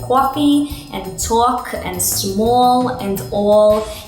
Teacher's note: for Brooklyn you want to have a lot of lip rounding to make those a sounds · you wanna have a lot of lip rounding to make those O sounds they do, like in coffee, and talk, and small, and all, and then you wanna have a lot of attitude, so that you got that Brooklyn attitude of don't get in my way.